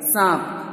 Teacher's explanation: हल्का सा नाक, नोज जो आपका होता है ये टच होता है, जब आप बोलते हो तो वहां से आवाज आती है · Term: चंद्रबिंदु